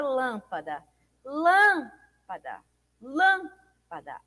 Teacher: O Lan é mais forte é pronunciado com maior intensidade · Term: antepenúltima sílaba